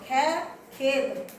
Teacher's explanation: हमारे में खेत, खे खेत, जैसे नुक्ता लगेगा उसके अंदर घर्षण निकलेगा।